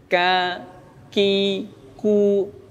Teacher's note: pengucapan huruf kaf yang disertai dengan nafas, ya, itu tidak berlebihan nafasnya ketika dia berharakat fathah, kasrah dan dhammah · Sehingga membaca huruf kaf itu disertai dengan hembusan nafas.